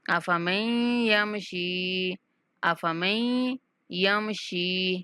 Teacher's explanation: نون کا ادغام کر دیں گے اور میم کو یا مشدد کے ساتھ ملاتے ہوئے غنہ کے ساتھ پڑھیں گے